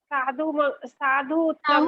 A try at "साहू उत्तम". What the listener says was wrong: साहू नहीं बोला इन्होंने, साहू उत्तम नहीं बोला।